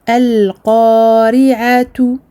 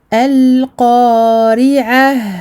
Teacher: Waqfan, je m'arrête, je vais dire al-qari'ah. Je vais transformer le ta en ha. Donc le ta, lorsque l'on s'arrête dessus, on enlève la haraka et les deux points.